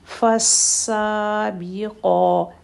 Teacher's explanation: سا اور قا دونوں کو کھڑا زبر ہے، تو دونوں کو 2 حرکت کا سیم ٹائم دیں گے۔